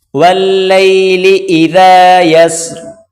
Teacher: ذال کو پڑھتے وقت ہلکی سی زبان کی نوک باہر نکال کر پڑھیں گے